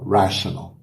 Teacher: E o T vira aquele som de chiado.